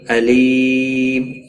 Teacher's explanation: یا مدہ ہے، ایک الف کے برابر کھینچ کر پڑھیں گے۔ وقف کی صورت میں میم ساکن پڑھا جائے گا، وقف بالاسکان ہوگا، 3 سے 5 الف کے برابر کھینچ کر وقف کریں گے، اور ملانے کی صورت میں اخفاء حقیقی ہوگا، گنہ کے ساتھ پڑھیں گے۔